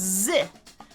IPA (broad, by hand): zɪ